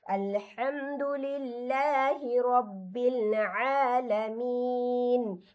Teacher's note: আলামিনের মধ্যে আইন আছে, এজন্য আমি গলা চেপে এটাকে পড়ছি।